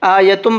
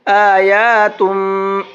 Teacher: دیکھیے کیوں غلط ہے، یہاں پر کھڑا زبر ہے، کھڑے زبر کو کھینچ کر کے پڑھا جاتا ہے